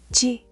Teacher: The J is like the J in Jeep, but softer, unaspirated, meaning almost no puff of air. And yes, the same smile and low tongue.